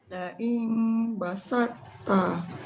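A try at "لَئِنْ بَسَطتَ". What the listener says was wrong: Sikit lagi nipis sin tu. Basalta.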